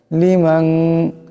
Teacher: মিন লিল আলামিন ইল্লালিল আলামিন লামের মিম নুন জবর মান লিমান এখানে নুন সাকিনের পরে শিন আসছে ইকফার হরফ ইকফার আকারে পরিমাণ গুণ হবে